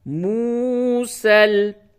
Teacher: وَلَقَدْ آتَيْنَا میم واو پیش مو، سین لام زبر سل، موسل، یہ یا نہیں پڑھیں گے، یہ رسم الخط کے طور پہ اس جگہ پہ لکھی گئی ہے، اور یہ واو مدہ ہے، واو ساکن سے قبل پیش ہو وہ واو مدہ ہوتا ہے، تھوڑا سا کھینچ کر کے پڑھیں گے